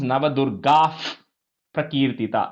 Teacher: So in this case, Navadurgaha is there. So you put a F because the next word is Prakirtita. So you put a F, so it becomes Navadurgaf Prakirtita. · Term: Visarga